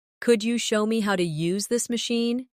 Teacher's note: Could you becomes could ya in casual rhythm.